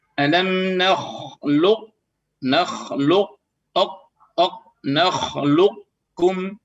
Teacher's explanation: Huruf qaf dia posisinya isti'la tebal dan huruf kaf adalah tipis. Berarti kalau tebal otomatis sampai ditipiskan, kalau tipis otomatis tidak bisa ditebalkan. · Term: idgham